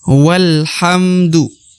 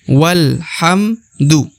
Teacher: Jadi bukan wa alhamdu ya, tapi wal langsung masuk ke huruf lam ya. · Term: hamzah wasol